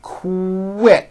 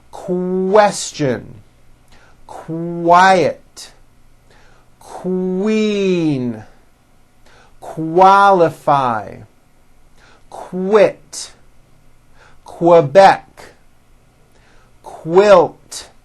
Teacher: pronounced with a k and a strong W sound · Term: Q sound